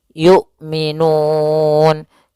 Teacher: yaitu Hamzah memiliki sifat jahar dan sifat syiddahnya dan jelas ya maka suaranya harus tertahan nafasnya dan tertahan suaranya · tidak boleh dibaca dengan Ain tapi dia Hamzah